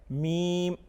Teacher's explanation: اس کے بعد میم، دونوں ہونٹوں کے خشک حصہ سے ادا ہوتا ہے۔ میم جب ہم پڑھتے ہیں تو ہماری ہونٹوں کے جو خشک حصے ہیں وہ آپس میں ملتے ہیں